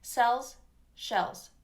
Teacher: shells that's me overemphasizing it'll be a little softer cells shells so it's almost kind of a mix between a z and an s when it's at the end like that